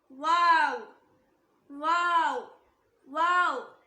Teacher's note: இந்த லெட்டரை ப்ரொனவுன்ஸ் பண்ணும்போது ரெண்டு லிப்பும் ஜாயின் ஆக கூடாது. வாவ் சொல்லி லிப்ஸை ஜாயின் பண்ணாம அப்படியே ஸ்டாப் பண்ணிக்கோங்க.